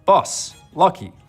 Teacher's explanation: the vowel sound that was back there to begin with, the sound in strut, bus, lucky, has to move back further.